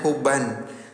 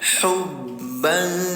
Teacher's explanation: Tanwin bertemu dengan huruf jim namanya ikhfa. Cara bacanya samarkan bunyi tanwinnya tahan dua harakat ya.